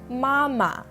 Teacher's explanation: the last tone is the neutral tone and has no indicated inflection it's usually quite weak and it's seen with filler words such as oh or ah